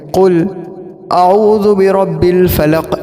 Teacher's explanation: ویسے قاف کے اندر ایک قاف جو ہے وہ اپنے اندر ایک قوی صفت رکھتا ہے، اور جب اس کے اندر وقف کیا جاتا ہے تو قلقلہ اس سے مزید ہوتا ہے